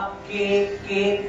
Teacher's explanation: క అన్నప్పుడు కింది అంగిడి నాలుక వెళ్లి పై అంగిడిని నొక్కుతుంది